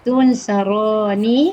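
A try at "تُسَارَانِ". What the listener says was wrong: Tidak ada nun, Ibu. Ibu tadi cakap tunsaroni. Harusnya tidak ada nun.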